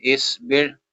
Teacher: سواد کو موٹا کریں گے کیونکہ یہ حروف مستعلیہ میں سے